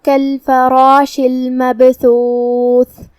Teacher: کلمت المبثوث میں یہاں با کا حکم ہے قلقلہ، تو ہمیں با کو ہلاتے ہوئے یہ کلمہ کو ادا کرنا ہے